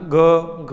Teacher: જ્યારે બોલીએ ત્યારે આપણે નાદ તંત્રી છે એમાં વધારે કંપન થાય છે, એને ઘોષ ધ્વનિ કહેવાય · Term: ઘોષ વ્યંજન